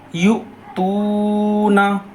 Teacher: साकिना के पढ़ने में झटका होगा, यहाँ वाव मद्दा है इसलिए वाव मद्दा को एक अलिफ बराबर खींच कर पढ़ रहे हैं · यहाँ हमज़ा साकिना के पढ़ने में झटका होगा